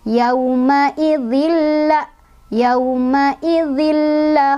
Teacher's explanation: Cara bacanya, masukkan ke huruf lam langsung, jangan dibaca lagi tanwinnya, tapi tidak berdengung, jadi cuma ditekan aja. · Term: idgham bila gunnah